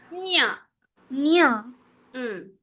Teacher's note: జ న్ న్ న్ అనాలి ముక్కుతో రావాలి